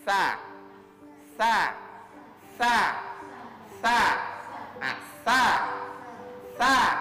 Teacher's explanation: dalam bentuk digigit sa sa atau yang kedua bisa juga eh ujung lidah itu menyentuh gigi bagian atasnya